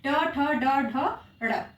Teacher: इन सभी वर्णों का उच्चारण स्थान कहाँ है? तो मूर्धा है। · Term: मूर्धन्य वर्ण